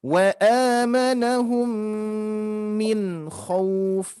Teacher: Di sini ada nun mati bertemu huruf ho ini tidak termasuk huruf yang harus didengungkan. Wa amanahum min khauf ya, min dibaca jelas ya.